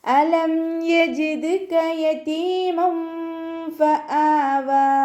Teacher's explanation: അലം ഹംസയെ നല്ലോണം ക്ലിയർ ആക്കി കൊടുക്കണം കേട്ടോ. അക്സൽ ഹൽക്കിൽ നിന്നാണ് ഹംസ പുറപ്പെടുന്നത്. അതിൻ്റെ സൗണ്ടിനെ വ്യക്തമാക്കി കൊടുക്കുക.